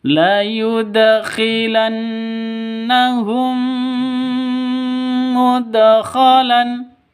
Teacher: Di sini ada nun tasydid. Nun tasydidnya berdiri sendiri. Jadi gunnah musyaddadah, dengung 2 ketukan.